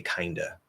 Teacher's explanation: what will most commonly overall happen with of is we'll drop that V completely